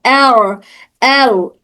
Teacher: जुबान का नोक जबान का सामने वाला हिस्सा ऊपर तालू को जाकर टच हो रहा है · अर अदा करते वक्त जुबान मुकाबिल तालू से चिपकती है। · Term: साकिन